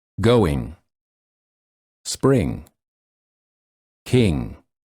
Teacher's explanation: For this sound, the back of the tongue touches the soft palate in the back of the mouth and the air flows out of the nose.